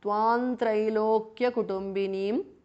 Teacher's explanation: ఇన్ అనుస్వార followed బై త్ so it becomes త్వాం త్రైలోక్య కుటుంబినిం because of సంధి అనుస్వార చేంజెస్ టు న విచ్ ఇస్ ద నీసల్ ఆఫ్ త వర్గ · Tvam ends in Anuswara followed by T, so it becomes Tvam Trailokya Kutumbinim because of Sandhi. Anuswara changes to N, which is the nasal of Tavarga.